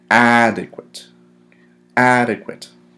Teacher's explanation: so the accent displays on the first syllable